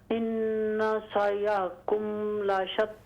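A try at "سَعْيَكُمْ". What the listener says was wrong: ان سعیکم لشتی. سع سین عین زبر عین کو کلیئر کریں۔ سعیکم.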